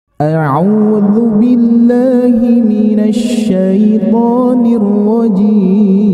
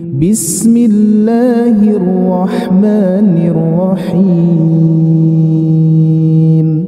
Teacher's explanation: Ta'awudnya datar dan bismillahnya turun